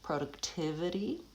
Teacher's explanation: And then lastly, in productivity, it's a 5-syllable word actually, and so it has secondary stress as well as primary stress. The primary stress is on tiv, that's the longest syllable, productivity, but the first syllable goes back to a pure vowel o because it has secondary stress.